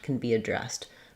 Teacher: As a helping verb, can be, I tend to just use the n sound